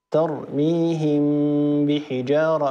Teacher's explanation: قالوا عار عن التشديد، يعني أن الحرف الأول لم يتحول تماما إلى الحرف الثاني مع بقاء الغنة في الحرف الأول، والحرف الأول هنا الميم والغنة باقية في الميم، والغنة هنا كاملة ترميهم بحجارة، مع التنبيه إلى أن الميم أو أن غنة الميم هنا غنة كاملة، ولا بد من تطويل الغنة، ولكن طول هذه الغنة يكون أقصر بقليل من الغنة النون والميم المشددتين والمضغمتين.